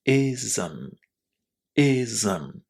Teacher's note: Two syllables here, even though we only have one vowel, one letter there, I but there is a little vowel sound just in between Z and M in pronunciation here